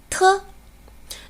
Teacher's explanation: 舌尖抵住上齿龈，挡住气流，然后舌尖突然离开，口腔送出的气流比较强。